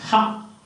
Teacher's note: oral, voiceless, glottal, fricative